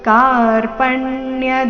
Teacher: ಆಗ್ತಾ ಇದೆ ಕಾರ್ಪಣ್ಯ ಈ ರೀತಿ ಬೇಡ ಕಾರ್ಪಣ್ಯ ಕ ಚೆನ್ನಾಗಿ ದೀರ್ಘ ಬರಲಿ ಮುಂದೆ ಪ ಮೇಲೆ ಆಘಾತ